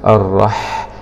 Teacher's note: الراء حاء سكون مع الهمس